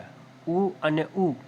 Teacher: ઉ અને ઉ બોલતી વખતે હોઠ ગોળ આકાર ધારણ કરે છે, આથી તેને ઓષ્ઠ્ય સ્વર કહેવાય છે.